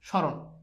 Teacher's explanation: এই ম ফালা উচ্চারণ হচ্ছে না স এর সাথে যেহেতু ম যুক্ত রয়েছে তাহলে স টা হয়ে যাবে তালেব্যের সজন্য এখানে এই ম ফালা